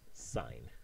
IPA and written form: saɪn (sign)